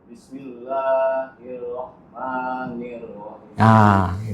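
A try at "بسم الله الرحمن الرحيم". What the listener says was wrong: Bismillah. Jangan langsung Bismillahi.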